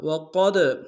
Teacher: قاف کو موٹا ادا کرتے ہوئے دال کے سامنے لانا ہے، دال حروف قلقلہ میں سے جب ساکن ہوا تو قلقلہ کریں گے